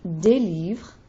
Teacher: Des livres, I'm not pronouncing the S at the end.